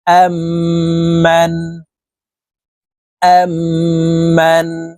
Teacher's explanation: পূর্বের হরফের সাথে এই তাশদিদ ওয়ালা মিমকে গুন্নার সহিত পড়তে হবে মাঝখানে জজমওয়ালা মিম বাদ পড়ে যাবে · মিম সাকিনের পরে যখন মিম থাকবে তাশদিদ ওয়ালা মিম থাকবে তখন মিম সাকিনের পূর্বের হরফের সাথে এই তাশদিদ ওয়ালা মিমকে গুন্নার সহিত পড়তে হবে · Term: ইদগামে শাফাবি